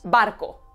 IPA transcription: ˈbar.ko